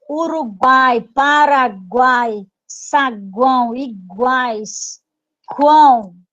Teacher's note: não é três vogais não são três sons uma semivogal uma vogal e outra semivogal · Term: tritongos